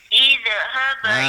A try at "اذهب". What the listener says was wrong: Tu dia tendang tu. Jangan tu dia tendang makhraj. Jangan bagi tendang. Izhab, yang hab baru tendang. Yang jangan tendang.